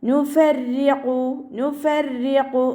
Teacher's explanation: റോക്ക് കെസ്റ വന്നതുകൊണ്ട് രീ എന്നുള്ള സൗണ്ട് കൊടുക്കുക.